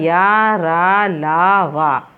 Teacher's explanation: इन व्यंजनों का उच्चारण करते समय जीभ मुंह के किसी भी भाग को स्पर्श नहीं करती है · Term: अंत्यस्थ व्यंजन